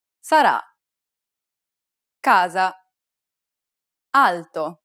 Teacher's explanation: The first vowel is A, sarà, casa, alto, It's identical to the A sound in the word father, except that it's held for a little longer. Open your mouth wide and let the air pour out.